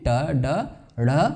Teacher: زبان کی نوک اور سخت تالو کا جب رابطہ قائم ہوتا ہے تو معکوسی آواز یعنی وہی کوز آوازیں جن کو ہم کہتے ہیں ٹ، ڈ، ڑ، اور ان کی تینوں حائیہ صورتیں۔